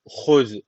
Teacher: hu boğazdan z peltek ve ince